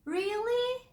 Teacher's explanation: You want to give that emotion. You say, you start lower, you raise your voice, and you then drop it at the end.